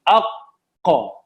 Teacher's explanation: Zero air, इसमें कोई हवा बाहर नहीं आती। अक, सही है जी, बिल्कुल ब्लॉक हो गया। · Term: कौफ